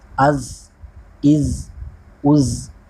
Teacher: جیسے کسی چیز کو رگڑا جائے تو گھسیٹنے کی آواز کی طرح آواز نکلے گی